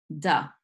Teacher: The sound of the D comes from the tip of the tongue pushing against the back of the front teeth. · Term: regular D sound